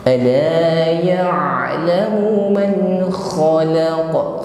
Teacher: ada gesekan di tenggorokan, ya. Antara akar lidah bergesekan dengan dinding tenggorokan. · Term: huruf ain